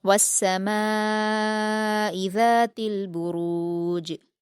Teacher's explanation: के बराबर खींचना है मध्य मुसिल होने की वजह से और लास्ट में जीम पर जब हरकत को हम वफ करेंगे तो वह जज्म में बदलकर जीम साकिन हो जाएगी और उस पर कलकला किया जाएगा।